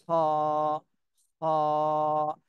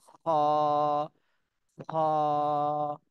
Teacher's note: হালকা খরখরে আওয়াজ হবে আর খ টা একটু মোটা করে বলতে হবে